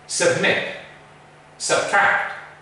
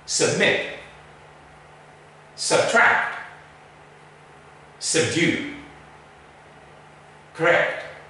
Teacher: can you see where the schwa is it's the first syllable of these words